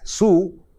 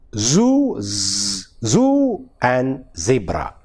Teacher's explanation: in Malayalam we don't have an equivalent in z, and that is why we mispronounce the word zoo as su and zebra as zebra, whereas it should be, the correct pronunciation is zoo and zebra.